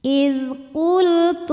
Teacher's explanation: Lam sukun dibunyikan dengan jelas namanya lam mutlak.